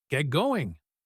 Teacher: We just say, "I better." And get going often sounds like get going. The T in get assimilates to the G in going.